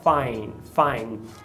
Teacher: Eu gosto sempre de lembrar que no português existem alguns sotaques que o D, ele é dental, então a língua se aproxima do dente superior, mas no inglês ele é sempre alveolar, pela fonologia sempre alveolar. Por eles terem o mesmo ponto de articulação, N e o D, é muito comum esse D ser apagado. Então aqui, em vez de find, eu percebi que ele fala find.